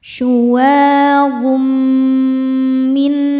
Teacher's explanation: Karena ada tanwin dhammah bertemu dengan huruf mim. Cara bacanya tanwin dileburkan ke mim disertai bunyi dengungan. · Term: idgham bighunah, idgham bi gunnah